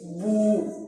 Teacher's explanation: दोनों होंठों को हम गोल करेंगे क्योंकि इस पर जमा है, बा पेश बू।